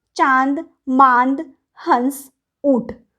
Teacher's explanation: इसका उच्चारण नाक तथा मुंह से होता है। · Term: अनुनासिक